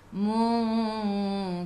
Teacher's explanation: Bila berhenti sebelum huruf ra ada baris atas, kena baca ra tu tebal, lidah naik ke atas.